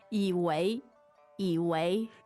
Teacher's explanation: Third and second tone.